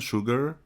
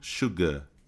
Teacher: Então você vai eh transformar esse som num som mais leve, digamos assim, né? Esse R ele vai ficar como se fosse um a prolongado. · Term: inglês britânico